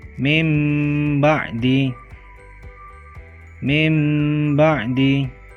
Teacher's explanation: mati dan tanwin bertemu dengan huruf ba cara membaca iqlab adalah mengucapkan dengan mengganti suara nun mati atau tanwin dengan suara mim